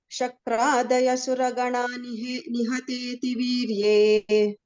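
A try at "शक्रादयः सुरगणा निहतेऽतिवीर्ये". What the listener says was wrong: No, both of you are doing your own tunes of third and fourth line. First line. Shakradaya Suraganani Hateti Virye. Shakradaya Suraganani Hateti Virye.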